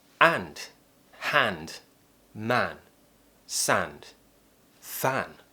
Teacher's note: mouth is just generally a little bit more open for the a sound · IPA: /æ/